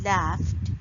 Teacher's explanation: ed in laughed is pronounced as t because in the base form of the word laugh, it's ending with unvoiced consonant, which is f sound.